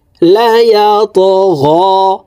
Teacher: ত কলকলার হরফ উপরের দিকে ধাবিত করে ধাক্কা দিয়ে উচ্চারণ করতে হবে